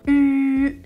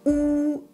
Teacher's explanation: U, la langue touche les dents. OU, je recule la langue ne touche pas les dents. Et c'est ça la différence, vous devez bouger la langue.